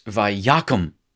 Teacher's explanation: the accent is going to show up on the first syllable